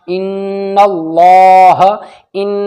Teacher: ناک میں آواز روکنا ضروری ہے کیونکہ نون کے اوپر تشدید ہے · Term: غنہ